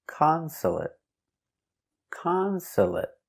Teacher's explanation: three syllables the stress is on the first syllable consolate consolate also finish with a stop T consolate not consolate